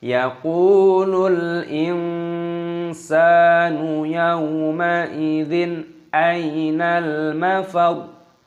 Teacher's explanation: Di sini ada lam alif, di sini perhatikan dibaca yaqulul. Insanu, nun sukun bertemu dengan huruf sin, diikhfakan, disamarkan, dan sinnya dipanjangkan, ada tanda fathah seperti ini.